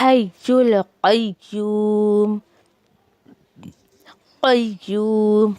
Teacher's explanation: قاف کو موٹا کرنا ہے